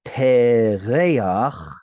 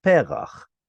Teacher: Here we get the word perach, which is a blossom or a flower, and instead of being pereach, the chet at the end causes the second segol to prefer a patach sound